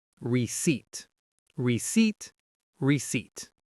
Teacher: The stress is on the second syllable, seat.